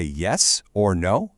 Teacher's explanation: do you hear how that upward lilt just leaves the door wide open? It conveys the impression that something more is to follow. · change my vocal delivery entirely to an upward questioning pitch